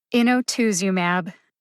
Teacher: It's TOOZ. The primary emphasis is on TOOZ. Emphasize TOOZ the most.